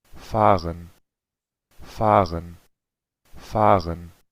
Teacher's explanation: una pronunciación estándar, porque se escucha la R uvular.